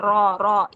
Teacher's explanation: र को मोटा करने का तरीका सिर्फ यही है कि आप र जुबान की जड़ जो है वो ऊपर उठा लें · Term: र जब मोटी